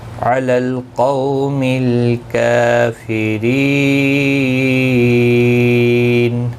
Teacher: وقف بالاسکان ہوگا. مد العارض وقفی ہوگا، 3 سے 5 الف کی مقدار کے برابر کھینچ کر وقف کریں گے · قو واولین ہے، تھوڑا نرمی کے ساتھ کھینچ کر ادا کریں گے، می کو کھینچنا نہیں